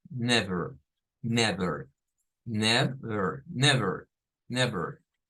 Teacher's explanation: Ahí estaríamos con nev, es una E abierta, y el schwa